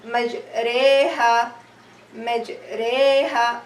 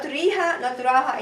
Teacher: I will be pronounced between. I will pronounce the letter Ra between alif and ya.